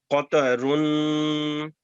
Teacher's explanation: اس قاف کو تھک لیٹر ہے موٹا کر کے بولیں